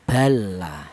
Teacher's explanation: Idgham itu memasukkan huruf awal, huruf lam yang pertama ini dimasukkan ke huruf yang nomor dua ini sehingga menjadi satu huruf yang bertasdid